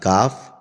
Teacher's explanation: کاف کا جو مخرج ہے زبان کی جڑ اور تالو کے سخت حصے سے ادا ہوتا ہے